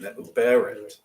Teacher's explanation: Our emphasis is on the be, not the ret.